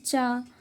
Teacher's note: अल्प प्राण जिसमें बहुत कम वायु मात्रा की आवश्यकता होती है